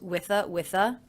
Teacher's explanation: a free day also the article of course is a schwa now I pronounce the ending th unvoiced